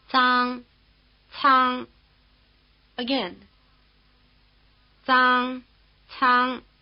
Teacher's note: 容 The consonants in the last row of display 2, written Z and C, may be described as being in the dental position. They are pronounced with the front of the tongue first touching just behind the upper teeth, in the position for T, and then moving slightly away in the position for S.